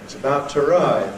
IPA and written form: ɪts əˈbaʊt twəˈraɪv (it's about to arrive)